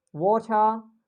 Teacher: we don't pronounce R sound in British accent when it comes after vowel letters. So whenever it comes after vowel letters, we just drop the R sound in the word.